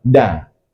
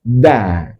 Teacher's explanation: Kalau di itu kita baca taruh lidah di langit-langit da. Tapi kalau dal itu taruh lidah di belakang gigi seri atas